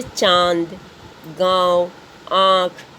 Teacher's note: अनुनासिक की पहचान है कि मुख और नाक, यानी मुंह और नाक दोनों से मिलाकर जो हवाएं बाहर निकलती हैं बोलते समय, उच्चारण करते समय, उसे हम बोलते हैं अनुनासिक। · ये सभी शब्दों को बोलते समय बच्चों हमें नाक और मुख दोनों का सहारा लेना पड़ा, यानी दोनों के मदद से ही इन शब्दों का हम उच्चारण कर पाते हैं।